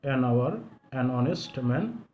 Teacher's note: It will be noticed that the words our and honest here begin with a vowel sound as the initial consonant h is not pronounced. এই ওয়ার্ডগুলোর দিকে খেয়াল করো, এখানে h, এখানকার h, এবার এখানকার h, এগুলো উচ্চারণ হয়নি, সরাসরি ভাওয়েল উচ্চারিত হয়েছে, এজন্য এগুলোতে অ্যান ব্যবহার করা হয়েছে।